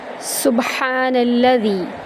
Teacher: ہا وسط حلق سے ادا کرتے ہوئے ایک الف کے برابر لمبا کریں گے · سین کو با میں داخل کرتے ہوئے با پر کلکلا کریں گے، جنبش پیدا کریں گے